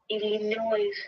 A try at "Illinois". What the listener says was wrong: okay. So that S is silence. It's called Illinois. The S is silence.